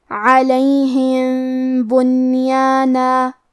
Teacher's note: ہم میم ساکن کو چھپاتے ہوئے اور غنہ کے ساتھ یہ حکم کو ادا کریں گے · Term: اخفاء